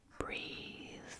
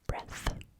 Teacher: So we're writing, and we get both a soft th sound and a hard th sound. So we've got the voiced th as in breathe, as well as the voiceless th as in breath